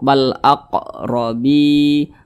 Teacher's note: Ra dibaca tabkhim atau tebal ya, karena dia memiliki tanda baca fathah